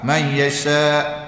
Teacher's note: Idgham ma'al ghunna. Yasha mak wajib muttasil. Panjang 4-5 harakat.